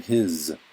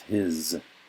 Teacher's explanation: the s makes a z sound in a lot of english words like the word his